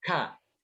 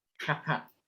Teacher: Ya, ini yang membedakan huruf kaf dengan huruf ka yang bahasa Indonesia ya. Kalau huruf kaf yang Arab itu dia hamesnya terasa sekali